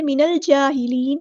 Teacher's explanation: لمبا نہیں کریں گے، حرکات کو لمبا نہیں کرتے، من الجاہلین، نون کو لام کے ساتھ ملا دینا ہے، حمزۃ الوصل ہمارا ڈراپ ہو جائے گا اور لام ساکن کی آواز کو یہاں ظاہر کرنا ہے، یہاں